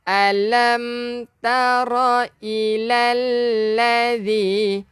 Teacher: Hujung lidah keluarkan sikit untuk zal.